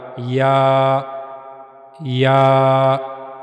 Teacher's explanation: زبان کا درمیانی حصہ منہ کے اوپر والے حصے کی طرف اٹھے گا، وہاں سے یا ادا ہوگا۔